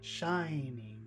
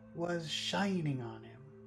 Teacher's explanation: shining on him the important word in that phrase is shining shining two syllables the first syllable is very big